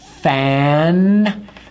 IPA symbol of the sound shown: æ